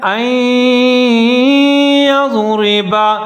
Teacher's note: یہاں پر نون حذف ہو جائے گا، نون کو نہیں پڑھیں گے